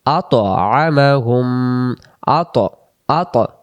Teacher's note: ত অক্ষরে সাকিন থাকলে কলকলার নিয়মে পড়তে হয়